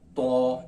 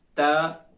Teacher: इसके अंदर आपने फर्क ये करना है, इसको ता के साथ नहीं मिलाना, ता तो, इसके अंदर फर्क होना चाहिए। तो को मोटा करके पढ़ेंगे और ता को बारीक पढ़ा जाएगा।